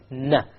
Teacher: Okay, notice here you actually use the tip. Okay, you use the tip, unlike in the lam where you use the upper portion. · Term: noon